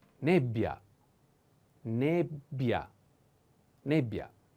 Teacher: The accent is on E. But pay attention to this double consonant